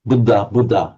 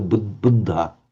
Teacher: they're dropping the aspiration of the dha and they aren't doubling it